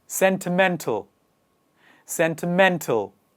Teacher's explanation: the stress comes on the latter part of the word towards the end of the word